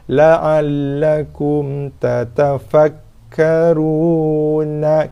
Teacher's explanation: So jelaskan mim, keluarkan sikit bunyi dengung padanya, sikit saja dengung yang tak sempurna. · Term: izhar syafawi